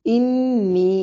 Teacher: انی نون مشدد پہ غنہ ضروری ہے